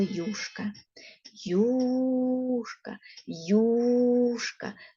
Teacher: На початку слова ми з вами чуємо два звуки й у й у Да й у Ось такі звуки ми з вами